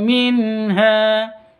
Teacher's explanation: Terang atau jelas, tidak boleh dengung karena bacaan izhar halqi. Minha hanya panjang 2 ketuk.